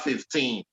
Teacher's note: the stress is on that teen. It's on the second syllable, which is where that teen is.